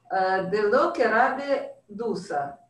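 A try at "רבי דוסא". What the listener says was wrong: Доса, все же. Он же типа Доса, а не Дуса.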